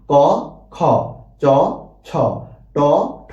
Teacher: ক থেকে খ উচ্চারণ করার সময় বাতাসটা হাতে যেয়ে বাড়ি খাচ্ছে। আবার চ থেকে ছ উচ্চারণ করার সময় দেখা যাচ্ছে বাতাসের আদিক্যটা হাতে এসে বাড়ি খাচ্ছে। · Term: মহাপ্রাণ